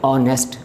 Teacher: حالانکہ ایچ ہے، ایچ تو کانسوننٹ ہے، ایچ جو ہے یہ لیٹر کانسوننٹ ہے. لیکن جب ہم اس لفظ کو بولتے ہیں تو ہم ہانیسٹ نہیں بولتے، ہم کہتے ہیں آنیسٹ